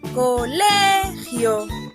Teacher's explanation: En la palabra colegio, la sílaba tónica es le, mientras que las sílabas co y gio son las sílabas átonas.